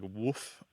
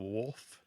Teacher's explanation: and so the L kind of disappears it sounds like wolf instead of wolf and it's got a